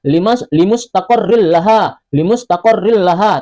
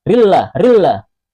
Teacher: Contoh tanwin berupa dhammatain bertemu dengan huruf lam pada surah Yasin ayat ke-37. Hukum bacaannya idgham bila gunnah, dimasukkan tanpa didengungkan.